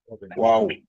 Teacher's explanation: ওয়াও উচ্চারণের সময় 2 ঠোঁট গোল হবে